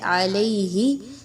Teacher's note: ربہ کلمات فتابا، تا الف زبر تا، الف مدہ ہے. علیہ، یا پر جزم کے نشان سے پہلے لام پر زبر ہے. 1 سے 2 الف کے برابر یا لین کی ادائیگی رکھیں گے